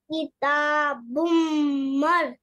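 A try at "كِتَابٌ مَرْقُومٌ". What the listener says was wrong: مر کے بعد رکنا نہیں. کتاب مرقوم. کتاب مرقوم.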